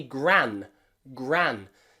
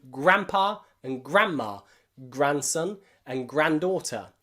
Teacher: but in grand there we don't pronounce the d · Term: silent d